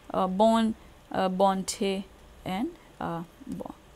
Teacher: the vowel becomes a nasal in this position where it is final, as because of the deletion of the nasal, the vowel becomes nasal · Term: nasal deletion